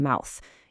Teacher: When you say the sound in mouth, your mouth literally starts wide open and then closes down into a tight circle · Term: dip thongs